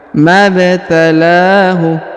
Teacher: huruf ba-nya berharokat sukun kita pantulkan atau kita qalqalahkan